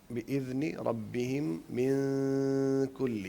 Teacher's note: یہاں پہ ناک میں ہم نے آواز کو صرف چھپانا ہے، نون کو ظاہر نہیں کرنا. تو لیکن ان کو برابر لمبا دونوں کو کرنا ہے. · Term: غنہ